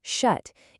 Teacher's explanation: You've got that initial shh, then the uh vowel in the middle, and that sharp, clean t at the end.